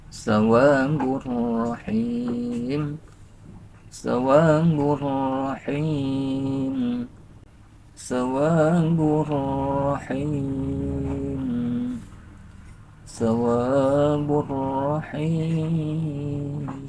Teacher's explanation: tanwinnya masukkan ke ro itu seolah-olah r-nya dua tasydid tanwin itu berasal dari nun sukun berasal dari nun mati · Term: idgham